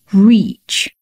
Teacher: reach 这个音 dream reach between 这样的长音 你的嘴里面的空间要挤压的比较扁